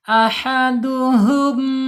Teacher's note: di sini ha bawah tenggorokan. Kemudian sifatnya alhamas, mengalir. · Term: alhammas